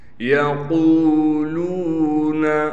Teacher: قاف کے بعد واو ہونے کی وجہ سے قاف کو ایک الف کی مقدار کھینچیں گے۔ اسی طریقے سے لام کے بعد بھی واو ہونے کی وجہ سے لام کو ایک الف کی مقدار کھینچیں گے۔